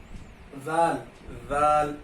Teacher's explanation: سا میں اور ذال میں دونوں میں زبان باہر نکلے گی. زبان سا میں اور ذال میں زبان باہر نکلے گی.